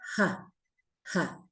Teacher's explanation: nos falta la aspirada fuerte, ¿sí? Y suena como una ja, ja. Es más fuerte que el bisarga, porque recordemos que la H en sánscrito nunca es muda.